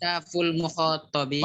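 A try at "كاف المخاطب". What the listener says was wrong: Mana alnya? Nggak ada.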